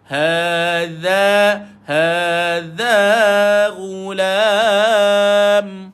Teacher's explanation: Dha hujung lidah dikeluarkan. Lidah pergi dekat gigi atas.